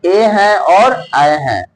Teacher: कुछ कुछ कंठ से भी आवाज निकलता है और कुछ कुछ तालु से भी आवाज निकलता है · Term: कंठ तालु